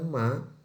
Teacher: Sedangkan ketika mengucapkan ma, akan terjadi dengungan atau tanpa melodi. Dan udara akan keluar lewat hidung.